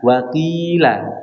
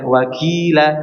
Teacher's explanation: Jadi jangan sampai mirip dengan huruf kaf, dan juga jangan sampai menebalkannya dengan sempurna ketika kasroh. Jadi qaf ini huruf yang tebal, namun ketika kasroh dia ketebalannya diringankan, tapi bukan sampai menjadi mirip dengan huruf kaf